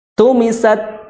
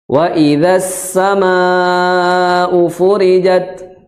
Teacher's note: hembusan nafas, tidak fokus pada bunyi suara ta ketika sukun. Wa idzas samaa'u furijat, seperti itu, bukan tss.